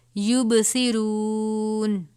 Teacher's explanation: یعنی حرکت کے ہیں، یبصرون، صاد بھی پر پڑھا جائے گا، را کے اوپر پیش ہے، را واو پیش رو، یہ بھی پر پڑھا جائے گا